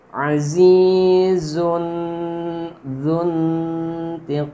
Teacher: Nah, di sini tanwin domaten bertemu zal. Zal ini huruf ikhfa, maka domatennya dibaca samar dengan dengung.